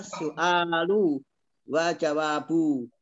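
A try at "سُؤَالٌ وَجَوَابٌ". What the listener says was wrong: Tanwinkan aja su'alun wa jawabun.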